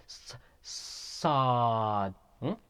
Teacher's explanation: Sad is a heavy letter, and it is pronounced from the tip of the tongue, again, from the tip of the tongue when it lies on the bottom incisors.